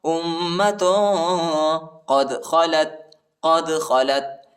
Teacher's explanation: حمزہ کو میم کے ساتھ ملائیں گے اور غنہ کریں گے، ٹھیک ہے، ادھر اخفا ہے.